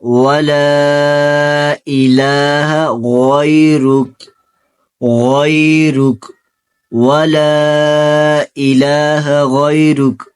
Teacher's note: یہ غین کو بھی پر پڑھنا ہے، را کو بھی پر پڑھنا ہے، ان دونوں کو غین اور را کو پر پڑھنا ہے۔